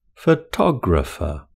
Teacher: It's the second syllable that has the main stress in photographer.